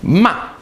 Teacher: to scold somebody ma your voice goes down sharply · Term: fourth tone